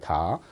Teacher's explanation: 다는 혀가 일단 이의 앞몸에 딱 붙어서 튀겨서 나옵니다.